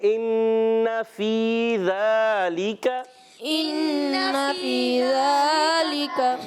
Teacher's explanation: ذالک، ذال پر کھڑا زبر، ایک الف کھینچنا ہے · نون مشدد، نون مشدد میں ایک الف کا غنہ ہوتا ہے